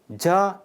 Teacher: a voiced palatal affricate produced by creating a brief closure in the oral cavity followed by a fricative release accompanied by vibration of the vocal cords